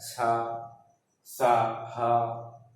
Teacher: जब इनका उच्चारण करते हैं तो एक प्रकार का रगड़ या घर्षण उत्पन्न होता है, इसमें से ऊष्म अर्थात वायु निकलती है, इसीलिए इसको क्या का नाम दिया गया, ऊष्म व्यंजन।